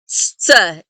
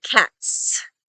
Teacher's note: really it's all one sound, a T sound plus the S sound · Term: Tzadi